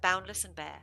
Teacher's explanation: the plosive alliteration of the bee sound in Bear